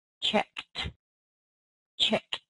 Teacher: we go from the unvoiced K to an unvoiced T